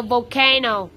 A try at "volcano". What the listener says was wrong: No. Don't shout. Just talk.